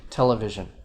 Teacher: the Greek stress on tele, I guess, outweighs the Latin stress